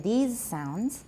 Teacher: the S is pronounced as Z